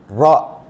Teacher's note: നാവിൻ്റെ അഗ്രം മുകളിലത്തെ മുൻപല്ലുകളുടെ ഊണിൽ, നൂനിൻ്റെ മഖ്റജിനേക്കാൾ മുകളിൽ റാ. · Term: അറബിയിലുള്ള റാ